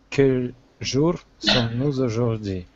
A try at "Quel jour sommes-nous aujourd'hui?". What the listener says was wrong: Только где ваша R?